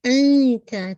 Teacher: نون کا ساؤنڈ آپ کو ہائڈ کرنا ہے، اخفا ہے نا. تو آپ تا کے مخرج کے پاس اپنی ٹپ آف دا ٹنگ کو رکھیے. انتا تا انتا ٹھیک ہے، تا کے ناٹ تا تا تا اتا.